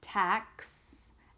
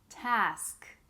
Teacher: The ending is inverted. One has the KS sound, tax, and the other has the SK sound, task.